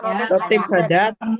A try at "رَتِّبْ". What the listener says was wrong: Rotib hadat itu ro-nya panjang. Rotib. Rotib itu panjang ro-nya. Ini rotib.